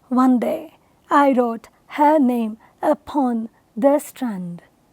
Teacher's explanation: in this poem Spencer uses five pairs of these unstressed and stressed syllabic words and weaves a music out of it